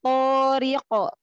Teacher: To-nya tebalkan, angkat pangkal lidah.